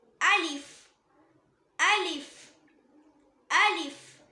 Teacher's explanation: அலிஃப் இந்த லெட்டரை வாய்க்கு உள்ள காலியான ஒரு ஸ்பேஸ் இருக்கும் பார்த்தீங்களா, அங்க இருந்து உச்சரிக்கணும். அதாவது த்ரோட் மவுத்தோட எம்டி ஸ்பேஸ்ல இருந்து ப்ரொனவுன்ஸ் பண்ணணும். அலிஃப் அலிஃப் அலிஃப்.